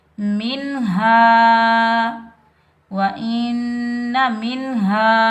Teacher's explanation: इस हा को हम सीने से अदा करेंगे